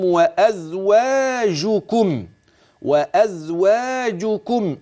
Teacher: انتبه للمد الطبيعي الواقع بعد الواو وان لم يكن مرسوما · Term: المد الطبيعي